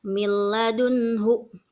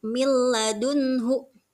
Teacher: ya tapi milladunhu itu huruf nun sukun bertemu dengan lam nah Nah jadi nunnya sudah tidak terdengar lagi Nun sukunnya karena hukum bacaannya adalah idqom